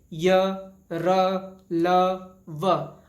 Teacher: जब हम खुद बोल के देखेंगे तो हमारी जो स्वर तंत्री है, जो हमारा कंठ है, उसमें पर्याप्त कंपन होगा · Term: सघोष